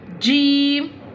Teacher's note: Jeem pronounce from the middle part of the tongue touching the middle part of the palate. Top of mouth.